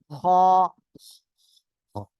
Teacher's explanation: গলার শেষ ভাগ থেকে খ অক্ষরটি উচ্চারণ হবে